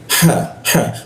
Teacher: Kalau ha itu posisinya di Jakun ya